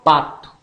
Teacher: B, oral, oclusiva, bilabial, sonora, barco. P, oral, oclusiva, bilabial, surda